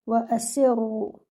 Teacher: circle your lips for the letter Waw, give it 1 count · Your Hamza is given 1 count and keep it light. Join your Seen with the Ra, make your Ra heavy and give it 2 counts